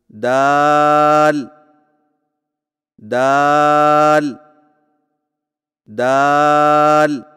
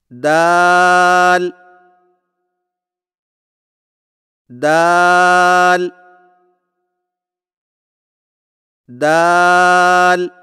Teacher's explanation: زبان کی نوک کو سامنے والے اوپر کے دو دانتوں کی جڑ سے لگا کر باریک آواز میں پڑھیں، یعنی دال دال دال۔